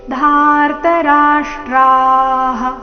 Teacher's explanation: ವಿಸರ್ಗದ ಉಚ್ಚಾರಣೆ ಹ ಎಂದು